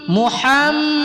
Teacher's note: Kemudian pada huruf ha halqi bagian tengah tenggorokan